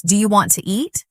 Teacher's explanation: Sometimes letters are dropped like the T in want to. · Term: connected speech